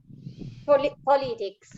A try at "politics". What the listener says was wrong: Be careful with the politics. Politics, the accent.